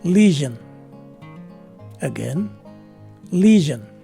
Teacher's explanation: the stress is in the first syllable the letter e is a long e